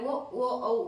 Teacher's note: ನಿಮಗೆ ಕಂಠನು ಮುಖ್ಯ ಓಷ್ಠ್ಯನು ಮುಖ್ಯ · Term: ಕಂಟೋಷ್ಟ್ಯ